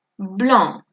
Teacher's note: On ne va pas prononcer le C.